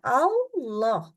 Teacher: dia menjadi tafhim karena sempitnya bagian belakang pangkal tenggorokan · membaca lam dengan kondisi tafhim maka pangkal lidah yang awalnya turun di ya di bagian belakangnya sekarang pangkal lidahnya naik ya Bangkal lidahnya itu naik jadi em berhati-hati nanti ketika membaca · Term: lam yang tebal